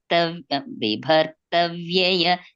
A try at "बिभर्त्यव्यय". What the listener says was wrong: There is no ta. It is Bibart Yavyaya. Bibarti Avyaya becomes Bibart Yavyaya.